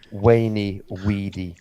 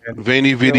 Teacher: that letter V in Latin, in classical Latin, was a w sound, not a v sound. It was only later that it became a v.